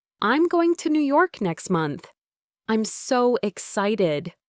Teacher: I'm so excited." But instead of a rising, enthusiastic intonation on excited, her voice had a slight falling tone, almost like a statement of fact rather than an expression of joy